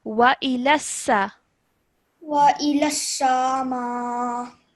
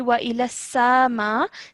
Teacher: when you're letting go of the sa sound, you're not stretching for more than 1 second